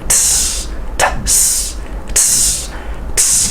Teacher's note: So the T and the S together, we say T, S. But we say it quickly.